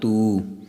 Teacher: ਬਗੈਰ ਆਇਆ ਹੈ ਤਤੇ ਨੂੰ ਦੁਲੈਂਕੜ ਹਨ ਟਿੱਪੀ ਨਹੀਂ ਹੈ ਸੋ ਜੇਕਰ ਟਿੱਪੀ ਹੋਵੇ ਤੇ ਤੂੰ ਨੱਕ ਵਿੱਚ ਬੋਲਣਾ ਹੈ ਹੁਣ ਨੱਕ ਤੋਂ ਰਹਿਤ ਬੋਲਣਾ